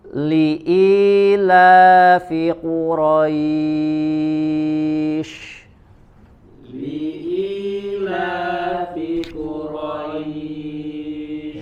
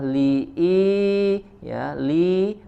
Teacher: Li'ilafi Quraisy. Ya, huruf lam li ya, sempurnakan kasrohnya jelas ya, menurunkan rahang bagian bawah. Li ya, li, kemudian i ya, huruf i di sini hamzah dari aqsal halq ya, dari tenggorokan yang paling jauh.